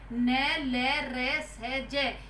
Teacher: वत्स्य के अंतर्गत इन व्यंजनों के उच्चारण में दांतों का अंदर का मसूड़ा छुआ जाता है